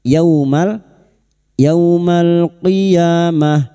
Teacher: Yaumal fathah bertemu sukun. Kita lunakkan huruf lin yau seperti bertemu dengan huruf abjat u